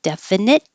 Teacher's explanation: you won't hear that T at all because your tongue's going to the T position